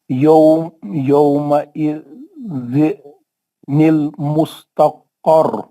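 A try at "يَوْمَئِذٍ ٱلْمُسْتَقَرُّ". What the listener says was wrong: نہیں یومئذ نہیں پڑھ سکتے باپ، زیر نہیں پڑھنا. روکے تو آپ اسٹاپ کرے تو زیر نہیں پڑھنا.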